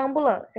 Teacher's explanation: Quando eu separei ambulância, esses que estão aqui destacados, eles são o A nasalizado. A nasalizado é apenas um som. Você não fala o som do M.